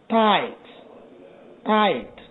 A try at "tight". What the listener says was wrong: Again, tight, tied. This one, I think you can make that T a little bit with more air. So, tight, tied.